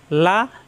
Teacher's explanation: লা জিহ্বার আগার কিনারা উপরের দাঁতের গোড়ায় লাগিয়ে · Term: লাম